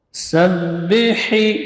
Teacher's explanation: sin shafir sughra, desisnya paling kecil